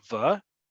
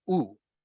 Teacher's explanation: the second to last letter is a vav, but we don't pronounce it like va, we pronounce it like u. Vav is one of the three letters in Hebrew that can also take a vowel sound, can represent a vowel sound.